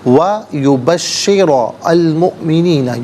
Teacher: درمیان میں سے الف یعنی حمزہ کو حذف کیا جائے گا